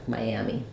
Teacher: three syllables so in order to be able to hear Miami as you connect between vowels make sure that you have that Y sound there